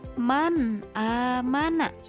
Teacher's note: halnya yaitu Man aamana ada nun sukun bertemu dengan huruf alif Jadi dibacanya harus jelas Nun nya seperti kita bilang huruf N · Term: izhar